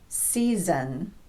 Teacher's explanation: All vowels are voiced, so the second S will be pronounced z